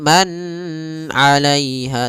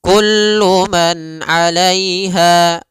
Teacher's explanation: Ain itu termasuk huruf tenggorokan. Maka nunnya jelas kullu man alaiha dan nunnya tidak boleh ditahan. · dan nunnya tidak boleh ditahan, tidak boleh man 'alaiha, tapi kullu man 'alaiha langsung. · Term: izhar halqi